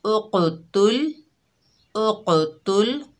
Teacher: क़ाफ की आवाज़ पलटकर वापस आ रही है लेकिन लाम की आवाज़ पलटकर वापस नहीं आ रही, उसके मखरज में रुक रही है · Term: हुरूफ़ कलकला